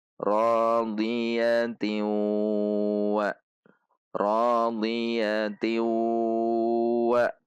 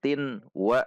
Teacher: contoh membacanya ryati wa rhyati wa bukan Tin wa namun tiwwa ada dengung dua harakat · tanwin ini dibaca masuk kepada huruf ww dengan gunah · karena di depannya ada tanwin bertemu waw maka tetap dibaca masuk dengan gunah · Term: idgham bhunah